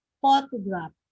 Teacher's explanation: So the stress is in the first syllable.